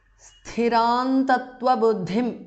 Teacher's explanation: Sthiran tattva buddhim because of sandhi. Because anuswara is followed by ta, so anuswara changes to na, which is the nasal of the ta varga.